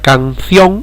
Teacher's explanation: Para que sea hiato, el golpe de voz tiene que recaer sobre la vocal cerrada, y la palabra canción no lleva el golpe de voz sobre la i, por lo tanto no es hiato. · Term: diptongo